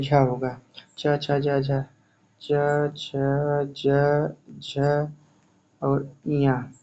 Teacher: झ च, छ, ज झ और ञ ये सब ये सब आते हैं तालव्य में